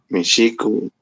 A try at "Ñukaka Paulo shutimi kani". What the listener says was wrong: Shutimi Kani. Shuti es nombre. Shuti. Dijiste Mishu, dijiste extranjero y también podría ser entendido como gato.